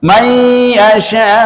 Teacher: nun mati bertemu dengan ya idgham bi gunnah itu dibaca dengung